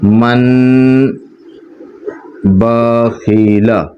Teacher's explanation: تنوین اور نون ساکین کی آواز کو میم سے بدل کر، یعنی جو نون کی جو آواز آئی نا اس نون کو میم سے بدل کر غنہ کے ساتھ پڑھیں گے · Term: اقلاب